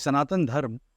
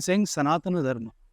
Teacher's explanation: When we say Sanatan, it means the last syllable is missing there.